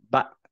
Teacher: বাতাস বের করি নাই কলকলা করি নাই